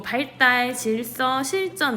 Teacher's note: 리을이 다 앞자음으로 오고 있고 그 뒤에 드스즈와 같은 한자어 자음이 위치하게 되면 리을 뒤에서 드스즈는 모두 뜨스즈 된소리로 변화하고 있는 것 확인할 수 있죠